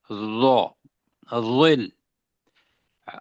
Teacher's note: دانتوں کے درمیان زبان بھی ہے اور موٹا بھی ہے